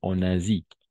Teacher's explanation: Si la S está entre dos vocales, vamos a pronunciar como una Z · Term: S vibrada